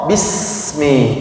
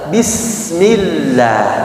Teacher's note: sifat sofirnya harus nampak jelas, desisannya jelas, nggak boleh samar-samar